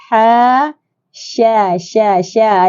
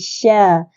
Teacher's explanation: Ada hemburan yang kuat, tafashi, sya.